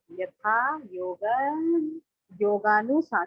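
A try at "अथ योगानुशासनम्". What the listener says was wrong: यथा नहीं, यथा नहीं, अथ। शासनम।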